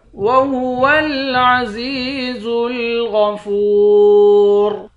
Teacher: وَهُوَ الْعَزِيزُ الْغَفُورُ، زا کو یا کے ساتھ ملا کر ایک الف کے مقدار کھینچ کر پڑھیں گے. غین کو موٹا پڑھیں گے، فا کو واو کے ساتھ ملا کر ایک الف کے مقدار کھینچ کر پڑھیں گے. آخر میں را ساکن ہے.